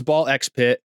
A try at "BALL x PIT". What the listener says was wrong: The X is silent.